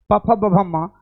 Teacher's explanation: ओट से टच हुआ है ओट से शुरुआत हुआ है